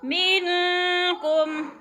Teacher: قلیلا منکم، من پہ اخفا ہو رہا ہے، نون ساکن کے بعد کاف حروف اخفا میں سے ہے تو وہ نہ کریں گے، اخفا کریں گے، ناک میں آواز لے جائیں گے